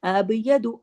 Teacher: अब तुल त जो है हैवी लेटर है मोटा करके पढ़ना है मुंह भर के पढ़ना है खतुल अब यदु अब यदु अब फिर बा जो है जम्म के साथ आया तो कलकला होगा